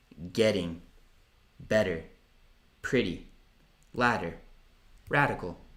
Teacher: Flap sound for the T or the D, ok? So, soprattutto tra le vocali.